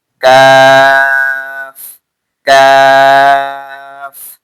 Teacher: জীবার গোড়া থেকে একটু আগে বাড়িয়ে তার বরাবর উপরের তালুর সঙ্গে লাগিয়ে